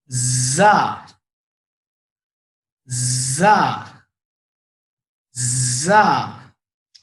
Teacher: ऊपर के दांत में इधर लगाए, अब इधर जो है जबान की नोक नीचे के दांत की जड़ में लगाएंगे। ठीक है, जबान की नोक नीचे के दांत की जड़, और इसकी आवाज सख्ती से आएगी, स्ट्रेस रहेगा आवाज में।